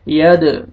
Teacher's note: دال دیکھیں حروف قلقلہ میں سے ہے، ڈبل ساؤنڈ آئے گا یہاں پہ، قلقلہ کریں گے